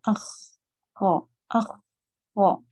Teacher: مخرج کے کمزور جگہ پر ہونے کی وجہ سے اس میں سانس کا بہاؤ جاری رہتا ہے، جس وجہ سے ان کو ہمس کے ساتھ پھر پڑھا جاتا ہے، جیسے اخ، خو، اخ، خو.